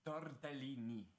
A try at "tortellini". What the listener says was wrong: Close enough.